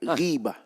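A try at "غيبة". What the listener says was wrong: Jangan panjang benar lah.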